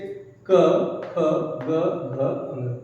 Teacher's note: क्योंकि ये एक एक वर्ग जो है उनका उच्चारण स्थान लगभग कॉमनली एक है। जैसे क, ख, ग, घ, अंग कंठ से बोला जाता है